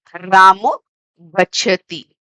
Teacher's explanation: the Visarg is becoming O ki matra. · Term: Visarg Sandhi